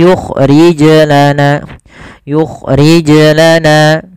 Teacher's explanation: tidak boleh menambahkan hamzah dan harus memantul, karena kesalahan terjadi tidak mantul dan menambah hamzah.